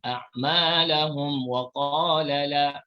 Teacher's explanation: Kemudian kita teruskan lagi a'malahum wa mim mati bertemu dengan qaf, namanya izhar syafawi. Izhar syafawi, jelaskan mim tanpa didengungkan.